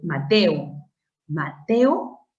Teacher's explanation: Mateo es la unión de dos vocales abiertas eso significa que van a formar parte de distintas sílabas